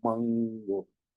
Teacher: Entonces, para nosotros como hablantes del español o para en general, no notamos una diferencia, a lo mejor ni nos hemos dado cuenta de que al decir esta N de mango es como más nasal, sube un poco hacia la nariz, mango. En cambio, nene, también es nasal, pero es diferente.